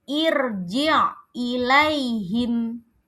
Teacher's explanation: rnya dibaca tebal karena sebelumnya ada hamzah wasol